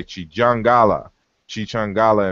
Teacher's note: this k sound um becomes palatalized and becomes J